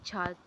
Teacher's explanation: जो चा वर्ग के वर्ण होते हैं वो तालु से उच्चारण होते हैं